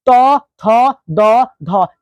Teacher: इसको बोलते समय हमारी जीभ जो है वह दांत से टच कर रही है, इसलिए इसका उच्चारण स्थान हो जाएगा दंत या दांत, दंत या दांत।